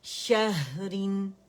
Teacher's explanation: اور را باریکی سے ہوگا کیونکہ اس کے نیچے کسرتین ہے.